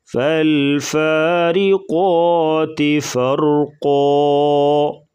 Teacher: را کے نیچے زیر، تو را کو باریک پڑھیں گے، قاف کو پر پڑھا جائے گا۔